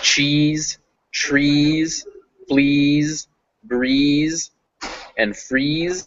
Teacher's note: make your E's nice and long, and to make sure you hit those Z's and not S's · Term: Z sound